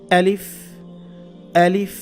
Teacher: আচ্ছা, তাহলে আলিফের উচ্চারণ যদি হয় আ, তাহলে আলিফটা বলতেও হবে এইভাবে, আলিফ, আলিফ। এটা খেয়াল রাখবেন, শক্ত করে বলতে হবে। হলকের শুরু থেকে, হলক মানে কণ্ঠনালী, কণ্ঠনালীর শুরু থেকে এটা আনতে হবে।